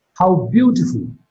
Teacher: Beautiful is marked with a falling tone. So this is how we use falling tone for exclamations in English.